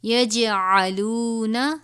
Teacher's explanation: آپ جیم دیکھ رہے ہیں حرف قلقلہ میں سے ہے، اس پہ بھی ہم قلقلہ کریں گے